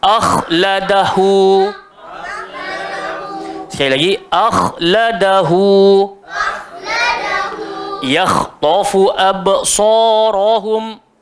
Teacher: Jadi hamzah tu tetaplah nipis, yang gemuk cuma kha. So jangan gemukkan hamzah tu awal-awal, sebab ada orang dia baca tak nak.